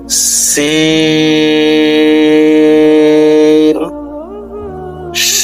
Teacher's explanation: জা সিন 4 আলিফ টানতে হবে, লিক পানসারের আওয়াজ হবে, জিহ্বার আগা নিচের দাঁতের আগায় লাগবে।